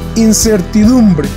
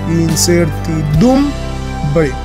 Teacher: el acento está en la penúltima sílaba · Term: palabras graves